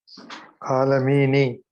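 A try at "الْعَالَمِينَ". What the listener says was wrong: No, it's not alhamdulillahi rabbil alamini. But I'm saying the noon. What does the noon originally have? Not originally. I'm talking about originally. Fatha. It's al-alamina. But because you're stopping, so how come when you stop, it becomes al-alamin? Why don't we say al-alamina? Why don't we say alhamdulillahi rabbil alamina?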